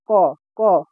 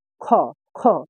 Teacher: আবার আরো অনেক জায়গায় আমরা দেখতে পারি যে আমরা যে অল্প প্রাণ মহাপ্রাণ নাসিক্য এগুলা পড়ি, দেখো তো ক, ক বাতাস বাড়াইছে বাতাস বাড়ায় নাই, তার মানে কি এটা হলো অল্প প্রাণ। খ, খ বাতাস বাড়াচ্ছে, তুমি হাত দিয়ে দেখবা বাতাস বাড়াচ্ছে মানে কি এটা মহাপ্রাণ